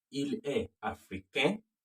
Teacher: Il est africain. The N is silent, it's nasal.